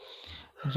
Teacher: रा जो है, रा हमारा लुंठित है। जिनके उच्चारण में जीभ तालु से लुढ़क कर स्पर्श करे